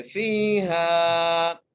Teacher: فا کو بھی ایک الف مقدار کھینچ کے پڑھیں گے، ہا کو بھی ایک الف مقدار کھینچ کر پڑھیں گے